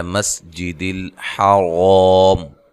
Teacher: سین کو باریک سیٹی سے، اور اس طرح لام کو ہلانا نہیں ہے، اور را کو موٹا ادا کرنا ہے۔ وقف کی صورت میں یہاں لمبا کر کے آپ وقف کر سکتے ہیں، مد کر کے۔